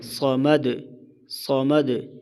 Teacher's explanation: صاد کو موٹا، دال پر قلقلہ، وقف کی صورت میں